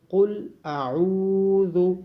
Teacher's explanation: قوف کو موٹا پڑھا جائے گا، عین کی آواز گلے سے آئے گی اور واو مدہ ہونے کی وجہ سے عین کو لمبا کیا جائے گا. ذال کی آواز نرمی سے آئے گی.